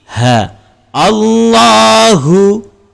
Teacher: huruf ha dan hamzah berada di halqum bahagian bawah